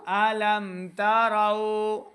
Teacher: میم ساکن ہے، آگے تا آ گیا تو یہاں پہ میم ساکن کو ظاہر کریں گے، یعنی بغیر غنہ کے پڑھنا ہے۔ ألم تروا را واو زبر راو لمبا نہیں کریں گے، واو کے اوپر دونوں ہونٹ گول کرنے ہیں، را کو پور پڑھنا ہے۔